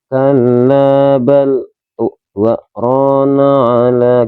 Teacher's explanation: Kalla bal dua rona ala gitu ya. Jadi kita tahan nafas selama 2 ketukan, 2 harokat, kemudian baru lanjut. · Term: saktah